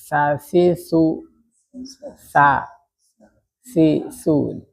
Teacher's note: untuk sa-nya keluarin aja lidahnya ya, sa si su dia lebih keluar gitu dibandingkan yang lain